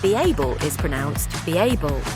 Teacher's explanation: Words ended in E, or what I like to call smiley vowels, are joined by a J sound.